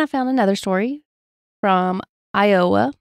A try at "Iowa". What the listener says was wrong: You put a lot of emphasis on O. Iowa. That's how you